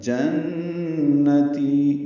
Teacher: نون مشدد پہ غنہ اور تی یا مدہ 2 حرکات لمبا